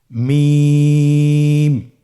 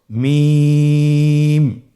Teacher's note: হ্যা দুই ঠোট চেপে ধরে আমরা উচ্চারণ করব।